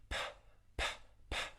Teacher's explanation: There's no voicing in your throat. If you take your hand and put it on your throat, you won't feel any voicing. P, p, p. And then what happens is the voicing only starts in the vowel sound that comes after the aspirated plosive. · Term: P sound